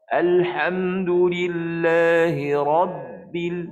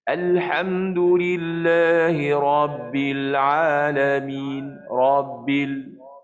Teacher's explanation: Jangan pula nanti ada orang baca huruf ba tu tak putus suara ataupun tak tersekat suara. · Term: sifat syiddah ba